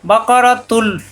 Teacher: তানবিনের পরে আসছে লাম, এক পেশ এসে লামের সাথে মিলবে, গুন্না হবে না, ঈদগামে বেলা গুন্না।